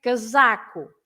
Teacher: you have to stress the middle one because it's the one before the last